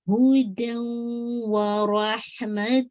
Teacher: اچھا اب تنوین کے بعد دیکھیے واو آ رہا ہے تو ادغام ہے، رائٹ، ادغام ہے لیکن ناقص ہے کیونکہ آپ کو اسٹل تنوین کی آواز سنائی دے رہی ہے